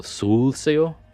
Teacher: the emphasis on these older Germanic words, the emphasis lands on the front syllable.